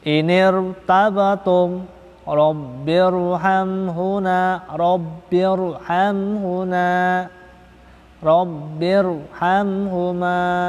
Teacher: Rabbir tebal Rabbirhamhuma baca tafkhim